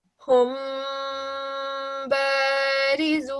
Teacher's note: So you do a 2-second light nasal sound. So you take the dry parts of your lips to make the meme sound and roll to join the wet parts of your lips to make the ba sound. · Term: slight nasal sound